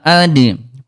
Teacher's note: kalau dal dia syidah dia kuat qalqalah ad pantulkan al.